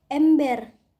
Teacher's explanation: direalisasikan sebagai bunyi e Tengah bawah depan tak bundar apabila berada pada silabel tertutup